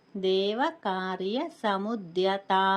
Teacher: ద్యా దగ్గర ఒక చిన్న విరామం ఇచ్చి తాను దీర్ఘంగా పలకాలన్నమాట